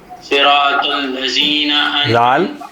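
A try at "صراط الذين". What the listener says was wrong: زال پڑھیں گے. نہیں لذین.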